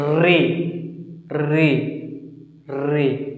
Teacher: री जीभ के आगे वाले भाग को मोड़ दिया जा रहा है, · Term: अग्रस्वर